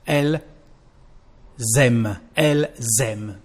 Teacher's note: we keep the sound L, but we add the sound Z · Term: liaison